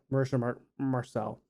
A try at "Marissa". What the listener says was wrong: Marissa, there's no H.